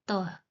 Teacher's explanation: त बोलेंगे ना तो आपके दांत से क्या होगा? टच होगा। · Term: दंत ध्वनि